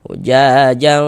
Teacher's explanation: Jadi di bagian jangnya itu suaranya itu kita tahan, kita panjangkan sebentar sepanjang dua harakat. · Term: ikhfa